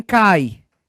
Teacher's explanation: Em cai, o A é vogal, o I é semivogal